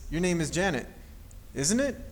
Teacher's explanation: with the rising intonation to check for being correct